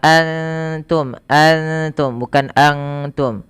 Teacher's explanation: Kemudian pada lafal antum di sini ada bunyi bacaan yang dinamakan dengan ikhfa hakiki. Suara nunnya disamarkan kepada huruf ta.